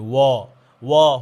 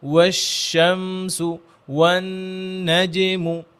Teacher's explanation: তো এই তিনটা হরফের ক্ষেত্রে যখন আমরা ওয়াও পড়বো তখন ঠোঁট যেন গোল থাকে, এটা সবাই গভীরভাবে খেয়াল করে। ঠোঁট যদি গোল না হয় তাহলে ওয়াও মোটা হয়ে যায়, ওয়া হয়ে যায়।